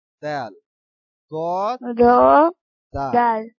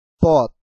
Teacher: দাল উচ্চারণ হয়েছে তো দাল আর দদের ভিতরে আমাদের পার্থক্য হলো দাল উচ্চারণের সময় কি হবে পাতলা উচ্চারণ হবে আর দ উচ্চারণের সময় একটু মোটা উচ্চারণ হবে